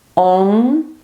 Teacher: Onu derken e dilimizin ucu üst damağımıza temas edecek ve orada bir titreşim yaratabilirsiniz